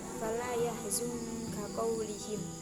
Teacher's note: makhraj qaf itu tidak begitu dalam dan cenderung diringankan karena antara huruf kaf dan qaf itu makhrajnya sama